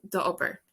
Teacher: So it comes together, the ober, your work, the ober, or the obervalia, your homework. So the O loses because it's coming together with another vowel. So basically two vowels don't like each other in Irish.